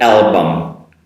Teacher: No vowel sound at the end of the word.